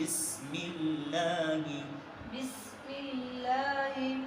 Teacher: لفظ اللہ کو باریک کیونکہ لفظ اللہ سے پہلے زیر ہے